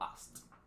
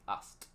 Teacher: casi siempre este sonido de la K se elimina fonéticamente hablando y pronunciamos simplemente en pasado asked. Asked, A-S-T, como lo pueden ver aquí.